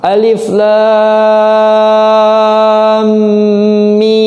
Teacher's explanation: Habis lam itu kan mim. Berhubung lam belakangnya mim, berarti mim ketemu mim. Disebut idgham mimi.